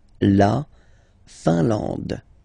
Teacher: I-N here, nasal, un. A-N, nasal, en. And then D, final E, not pronounced.